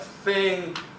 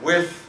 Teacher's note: It had 2 allophones, th at the beginning of words and the end of words, and the voiced allophone the in between vowels.